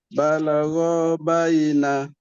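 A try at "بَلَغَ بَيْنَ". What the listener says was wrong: Okey, ro jangan panjang.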